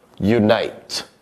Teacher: there's a slight y sound at the beginning, so we begin it with our y phoneme, and then we continue on u, as in oo, yun, the n, n phoneme, and then it.